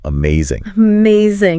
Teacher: there's that emphasis on that second syllable